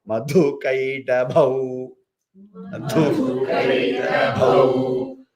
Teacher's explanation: Madhu kaita alpa prana. Madhu mahaprana. Ka ta alpa prana. Then again bhau mahaprana.